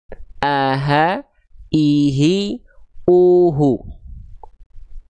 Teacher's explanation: Tsumma li aqsal halqi hamzun ha'u. Hamzah dan ha besar dilafalkan dari pangkal tenggorokan.